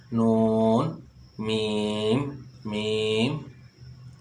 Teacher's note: اس کو یعنی کہ غنہ خیشوم یعنی ناک کے بانسا سے ادا کیا جاتا ہے، نون، یعنی کہ ناک کی طرف سے آواز جو ہے وہ پیدا ہو رہی ہے